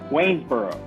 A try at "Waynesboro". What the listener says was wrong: Waynesboro. You didn't put the S in. You said Waynesboro.